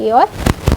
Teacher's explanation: कंठ तालव्य से ए और ऐ उच्चारित होते हैं